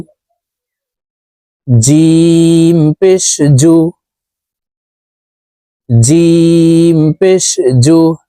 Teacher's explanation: জিম হরফের উচ্চারণ জিহ্বার মধ্যখান থেকে পড়তে হবে